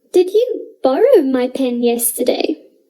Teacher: i place the stress on borrow because i am unsure of whether you borrowed the pen